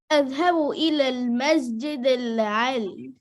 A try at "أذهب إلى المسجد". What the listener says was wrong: Doesn't say al-Masjid al-Ali. Read good, please. What is L? What is L? You said Masjid al-Ali. What is al-Ali? What is this al-Ali? What do you mean this? That's not, read the word. Read this word.